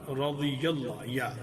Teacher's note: یا پھر غاد کی زیر کے فوراً بعد یا کو ادا کرنا، اور یا پر زبر ہے. اور یا کو اس کا مخرج ہم نے پڑھا تھا کہ وسط اللسان مقابل تالو، تو وہاں سے ادا کریں گے